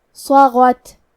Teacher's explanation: کلمت صغت میں حرف الصاد حروف التفخیم میں سے ہے تو ہم یہ حرف کو بھاری آواز میں پڑھیں گے. غین کی ادائیگی حلق کے اوپر والے حصے سے ہے. غین حروف التفخیم میں سے ہے لہذا ہمیں غین کو موٹی آواز میں پڑھنا ہے.